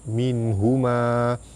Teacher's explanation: Nun mati bertemu dengan ha izhar halki terang jelas tanpa dengung. Pada atas bertemu alif mad asli panjang dua harakat.